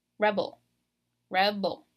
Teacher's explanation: So you're stressing the very first syllable, ul. So like the ul kind of comes out kind of weak because I'm putting more power and more emphasis in the beginning of that word.